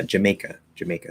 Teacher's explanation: there's two schwa and then may in the middle of jamaica